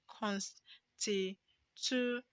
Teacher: Now the stress is on TU. Okay, because it ends with AL.